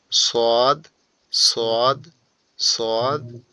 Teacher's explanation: জিহ্বার আগাটা নিচের দুই দাঁতের আগার সঙ্গে লাগবে। নিচের দুই দাঁতের আগার সঙ্গে।